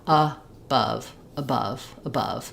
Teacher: where we have the unstressed schwa and then the stressed schwa, it's just short, long